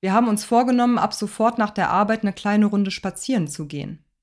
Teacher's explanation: spazieren ist hier noch wichtiger zu betonen als vorgenommen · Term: hauptakzent